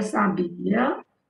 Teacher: A sílaba forte é bi